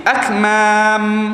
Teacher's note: Bunyi dia mati akmam. Mati terus tutup terus. Tak ada dah buka.